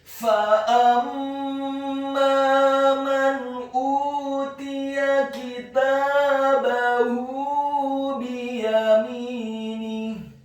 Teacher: di akhir ayat huruf ha-nya dibaca sukun dan dibaca tafkhim atau tebal